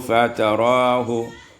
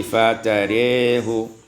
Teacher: Pada ayat yang ke 20 fatarahu, imalatu fathatur ra wal alif maka menjadi fatarehu.